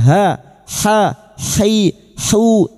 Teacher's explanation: wastul halqi atau tengah tenggorokan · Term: huruf ha